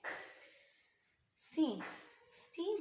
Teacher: सीन जो है इसमें सीटी की आवाज आना बहुत जरूरी है अगर इसम सीटी की आवाज नहीं आ रही तो इट्स मीन